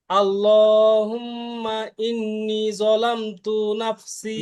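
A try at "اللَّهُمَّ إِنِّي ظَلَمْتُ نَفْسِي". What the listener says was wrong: ভাই, ইন্নি টান কম হয়ে গেছে, ইন্নি একটু টান দিয়ে বলেন, সুন্দর তো, আগেরটা তো ঠিক ছিল।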